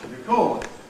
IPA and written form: rɪˈkɔːd (record)